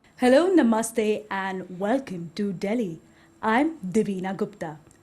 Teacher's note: indian english is not stress timed it's syllable time that's a big big difference